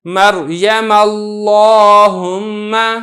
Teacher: مریم کی جو میم پر زبر تھی لہذا لفظ اللہ کا جو لام ہے اللہم کا جو لام ہے اس کو میں نے موٹا کر کے ادا کیا ہے